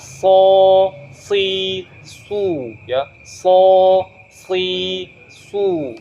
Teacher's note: seharusnya huruf shad itu tidak melibatkan bibir, tapi ujung lidahnya ketemu dengan ujung gigi seri bagian bawah.